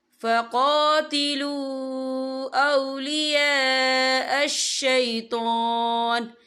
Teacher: یہ مد جو ہے مد متصل ہے، اس کی مقدار 4 عدد کے برابر ہے، تو ہم اسے 4 عدد کے برابر کھینچ کے پڑھیں گے